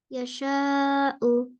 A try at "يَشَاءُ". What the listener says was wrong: Stop करेंगे तो मत हमजा है तो साकिन बनेगा तो झटका आएगा ना।